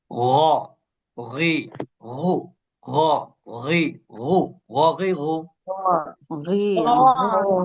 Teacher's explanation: এটা বাংলার গ কিন্তু এটা ভেতর থেকে বাধা বাধা হয়ে আসবে